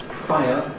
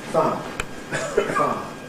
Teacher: The long journey that the tongue would have to make, going via [ɪ], is smoothed out, shortened, by cutting out that part of the journey. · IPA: [faə]